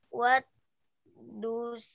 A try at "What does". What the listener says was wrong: Bukan dus. What does? Das bacanya das bukan dus.